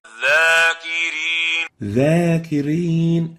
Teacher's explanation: Example of this mistake is وَالزَّاكِرِينَ وَالزَّاكِرِينَ za. They pronounce the dha as if it is a za. So they'll say وَالزَّاكِرِينَ.